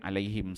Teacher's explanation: Kalau kita baca wasal terus satu ayat, dia keluar mu dua-dua tempat. Tapi kalau kita berhenti alaihim, dia tak keluar bunyi mu dia. Dia bunyi mim tu dia matikan. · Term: waqaf